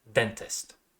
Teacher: the voiced alveolar d can be heard in the word dentist